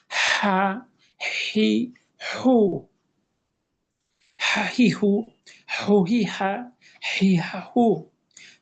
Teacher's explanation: তাহলে এটা হাড় বা কণ্ঠনালীর মাঝখান হতে উচ্চারিত হবে, অবস্থা একই, বৈশিষ্ট্য হলো এটা পাতলা করে বাতাস সহ, পাতলা করে বাতাস সহ। তাহলে হা, বাতাসটা আগে, শব্দটা পরে।